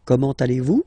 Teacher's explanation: it's a question, so raise a little bit your voice at the end, like, comment allez-vous?